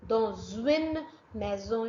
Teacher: S is linked with U sound. U is a vowel.